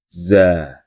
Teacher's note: za mempunyai sifat sofir, yaitu terdengar suara desisan pada saat dibunyikannya.